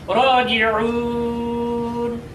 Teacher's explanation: এই জন্য এখানে যদি বিরতির জায়গা না হতো, তাহলে এখানে মদ্দে আসলির মধ্যে এক আলিফ পরিমাণ টেনে পড়া লাগতো। কিন্তু যেহেতু এটা বিরতির জায়গা, সেই জন্য এখানে এক আলিফের জায়গায় 3 আলিফ পরিমাণ টেনে পড়তে হবে, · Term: মদ্দে আরজি